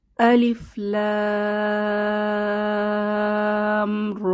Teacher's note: র এই হরফটি লিখতে যেহেতু দুটি হরফ র এবং আলিফ দরকার তাহলে এখানে দুই হারাকাত পরিমাণ টেনে পড়বো